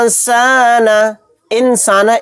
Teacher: نون ساکن کی آواز کو ناک میں چھپائیں گے۔ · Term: اخفا